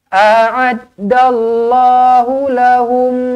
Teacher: mim kosong bertemu mim sabdu idgham mislain jumpa dengan mim sabdu terus rapatkan bibir dengungkan dua harakat.